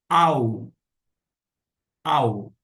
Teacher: Acontece que nós temos um caso de ditongo. Quando encontra-se o alfa e o Y, o som não será de ai, e sim de au